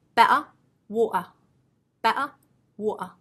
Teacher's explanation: but an American they often drop it now in British English there are some accents that will drop the T but they will actually use a glottal stop